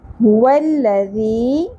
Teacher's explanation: ذال نرمی سے ادا ہوگا اور یا ساکن حرف مدہ ہے ایک الف کے برابر کھینچیں گے